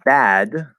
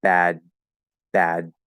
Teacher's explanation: the voice continues after the vowel after i go into the d position and then you need to sort of catch voice as you're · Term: voiced stop